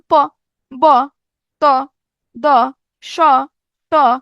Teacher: ফুসফুস থেকে নির্গত বাতাসের পরিমাণ যদি কম হয় তখন সেটা হচ্ছে অল্প প্রাণ।